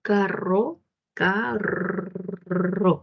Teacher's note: sienta como el aire sale cada vez que su lengua sube y baja, sube y baja. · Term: vibrante múltiple